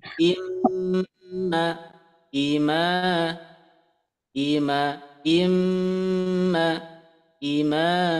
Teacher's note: Cara membaca gunnah atau dengung dibaca sebanyak 2 harokat gunnah sama dengan 3 ketukan lamban.